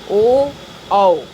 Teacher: ओ औ कंठ और ओष्ठ के मेल से इनका उच्चारण होता है और इनको हम लोग क्या किस नाम से जानते हैं, कंठोष्ठ, कंठोष्ठ।